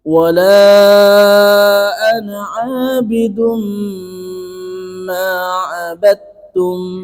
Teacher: Dan mim tasdid sendiri itu sifatnya sudah gunnah. Jadi dengungnya itu panjang. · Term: idgham bi gunnah